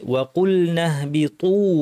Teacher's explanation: না থামলে মিম্মা কানা ফিহি ওয়া কুলনা, তখন এই ইয়াটাকে আমরা টানবো না, ফিহি ওয়া কুলনা, ওয়াও স্পষ্ট, কফ ভারী, লাম পাতলা, ওয়া কুলনা নাহবিতু, এখানে হাটা সুন্দর করে বলতে হবে, হাটা যেন পুরোটা বাতাস হয়ে না যায়, আওয়াজ থাকবে বাতাস, দুইটা মিক্সচার থাকবে